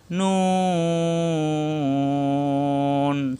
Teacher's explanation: জিব্বার আগা উপরের তালুতে লাগবে ঠোট গোল হবে